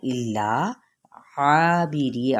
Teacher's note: आइन के वस्ते हल्क से अदा करते हुए अलिफ मद्दा और री बारीक पढ़ते हुए याई मद्दा